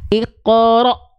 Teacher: Maka huruf-huruf yang bertemu dengan hamzah sukun, sifat syiddahnya sangat terasa.